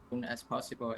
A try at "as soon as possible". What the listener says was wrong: As soon as possible. Again, missing that L. As soon as possible. It is a strange type of L. As soon as possible. But again, that L that comes in a consonant cluster with other consonants, he's missing it.